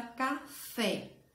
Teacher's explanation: sílaba gente conta do final para o início da palavra café a sílaba mais forte é fé